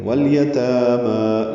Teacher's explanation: لام ساکن پہ اظہار، تاما مد اصلی قائم مقام الف مدہ